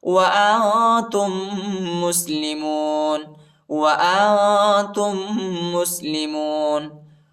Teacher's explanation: تا کو دوسرے میم کے ساتھ ملائیں گے، دوسرے میم پر شد آیا ہے اور غنہ کریں گے